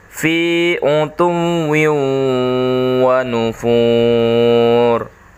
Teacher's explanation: suara tanwinnya hilang karena dia melebur. Ada penekanan pada huruf wa-nya.